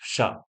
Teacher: जीवा जो है वो तालु को स्पर्श करती है शा बोलते समय